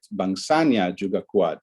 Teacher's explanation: the nya here, which is really a clitic, is still pulling the prominence to the right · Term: integration of clitics